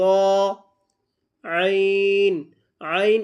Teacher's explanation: আইন উচ্চারণ হয় গলার মাঝখান থেকে।